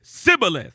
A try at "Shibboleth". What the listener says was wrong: They didn't pronounce it like sh. They pronounced it like s.